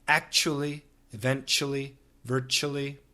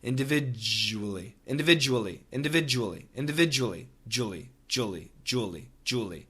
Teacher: It's a j sound, and the j is vibrated.